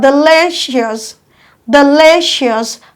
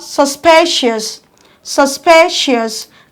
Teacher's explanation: Also we have IOUS, we have delicious, delicious, counting from the back, 1, 2. Your stress falls on the second syllable. We also have suspicious, suspicious, counting from the back, 1, 2.